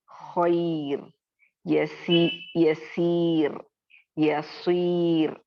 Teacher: جب بھی را ساکن آئے اور اس سے پہلے یا ساکن آ گیا تو وہاں پہ کسی بھی صورتحال میں را کو باریک ہی پڑھنا ہے. آپ اس سے پہلے والے حرف پر زیر ہو، زبر ہو، پیش ہو، کچھ بھی ہو جائے اس کو ہمیں دیکھنا ہی نہیں ہے.